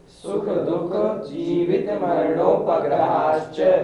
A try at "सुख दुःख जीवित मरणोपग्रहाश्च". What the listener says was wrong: बहुत से लोग बोलते हैं सुख दुख, दुख नहीं दुख, दू के बाद विसर्ग दिया हुआ है। कैसे उच्चारण करेंगे? सुख दुख, सुख दुख जीवित मरणोपग्रहाश्च।